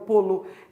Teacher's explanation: É por isso que polo, quando você pronuncia, o O vira, ó, polo. Não importa de onde você seja, você vai falar, esse O vira U